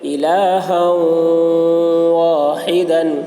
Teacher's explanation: اس لیے ہا کو واو سے ملا کر غنہ کے ساتھ پڑھیں گے، اس کو ادغام ناقص کہتے ہیں۔